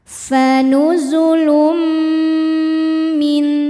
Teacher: Karena ada tanwin dhammah yang menghadapi huruf mim. Cara bacanya tanwin dileburkan ke mim disertai bunyi dengung. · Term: idghamhunah, idgham bi gunnah